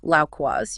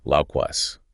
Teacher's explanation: you hear that Glide between the A and the U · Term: diphthongs